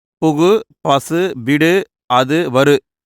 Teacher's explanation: தனிக்குறில் எழுத்தை அடுத்து வரும் வல்லின உகரங்கள் ஒரு மாத்திரை அளவுக்கு எப்பொழுதும் முழுமையாக ஒலிக்கிறது. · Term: முற்றியல் உகரங்கள்